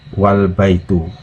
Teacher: ditambah wa di depannya maka huruf alif nya hilang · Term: hamzah washol